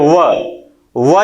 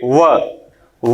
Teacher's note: हमारा जो होठ का निचला सिरा यानी कि नीचे का होठ हमारे ऊपर के दांतों में स्पर्श करता है। जैसे बोलिए व जब भी हम बोलते हैं, यानी इसमें जो दंत है ये दांत का ऊपरी सिरा, दांत का ऊपरी सिरा, और होठ जो होता है वह नीचे का। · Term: दंत्योष्ठ